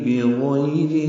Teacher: بغیر میں غین پر ہے اور یہ یائلین ہے، را باریک ہے